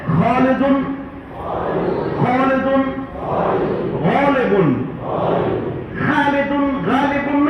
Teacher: خا جس پر نقطہ ہے اور غین، اس کو تھوڑا سا موٹا کر کے پڑھنا ہے، خا نہیں، خا، غین نہیں، غین۔